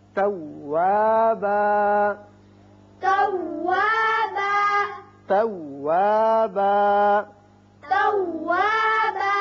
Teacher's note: وقت کی صورت میں ایک الف کے برابر آواز کھینچی جائے گی، زیادہ نہیں کھینچے گے